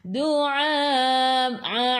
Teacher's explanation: Ai'u daripada kerongkong, bukan daripada hidung. Baris mad bertemu dengan hamzah yang bersendirian.